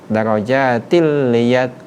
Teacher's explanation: Ini namakan idgham bila guna, memasukkan tanpa dengung. Darajatil liyat takhiza, tidak boleh dibaca darajatil liyat. · ini huruf tanwin, huruf kasrotain bertemu dengan huruf lam yang ada tasdid darajatil liyat, tidak boleh didengungkan.